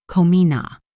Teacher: The linking happens with come in a. It flows together to sound like komina.